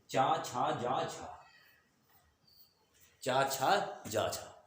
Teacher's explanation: मुख को स्पर्श करते हुए बाहर निकले स्पर्श भी करे और संघर्ष भी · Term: स्पर्श संघर्षी